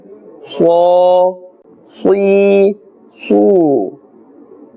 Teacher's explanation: This letter has a full sound because it is part of the huruf musta'aliyah.